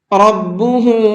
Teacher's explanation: را کو پر کر کے پڑھیں گے